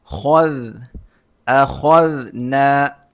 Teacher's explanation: خو موٹا ہوگا اور ذال کے ساتھ ملے گا